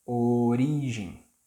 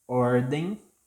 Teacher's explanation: If the O letter, it's not the stressed syllable, so the sound is closed, like in police. Origem. If it is the stressed letter, like in ordem, then the sound is open.